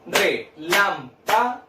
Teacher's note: ¿Dónde cargo la voz? En la sílaba lam.